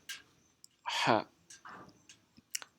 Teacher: Un poursuit son souffle dans la fosse nasale, alors que ha poursuit son souffle dans la cavité buccale